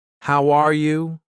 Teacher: when I say, How are you? my voice goes up at the end. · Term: Intonation